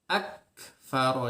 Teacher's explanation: Jadi kita yang harus diperhatikan ketika mengucapkan kaf itu, ucapkan syiddahnya dengan sempurna. Ak. Nah, setelah itu keluarkan nafas hamas, ya, nafas dengan natural. Keluarkan dengan natural, tidak di istilahnya, jangan dibuat-buat gitu ya, jangan dibuat-buat.